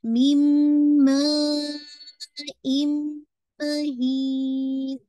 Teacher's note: नून साकिन के बाद मीम आ रहा है, ये भी आपका इदगाम कामिल है, यानी कंप्लीट इदगाम है विद मोस्ट कंप्लीट गुन्ना, दोनों मोस्ट कंप्लीट गुन्ना के साथ, अकमल गुन्ना के साथ है।